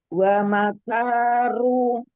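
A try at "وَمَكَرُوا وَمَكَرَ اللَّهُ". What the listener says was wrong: Kak, jangan panjang. Matobi jangan terlalu panjang. Wa makaru wa makarallah. Jangan terlalu panjang matobi'nya.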